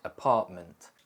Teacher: the T sound can also be glottalized, so the throat tightens to stop the air and shorten the vowel sound in words like apartment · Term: glottal T